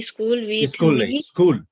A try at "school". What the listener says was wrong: no remove the e there is an e before s that you pronounce remove that pronunciation